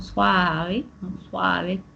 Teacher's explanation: casos pues de aspiraciones de la S